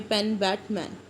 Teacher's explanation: ਜਿੱਥੇ 2 ਲਿਪਸ ਆਪਾਂ primary ਆਰਟੀਕੂਲੇਟਰ ਯੂਜ਼ ਕਰਦੇ ਹਾਂ, ਦੈਟ ਇਜ਼ ਬਿਲੇਬੀਅਲ। ਐਗਜ਼ਾਮਪਲ ਪ ਬ ਮ, ਜਿਵੇਂ ਪੈਨ ਬੈਟ ਮੈਨ।